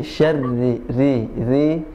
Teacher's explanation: ri diturunkan lidahnya. Tidak diputar, tidak ri ya, tidak syarri.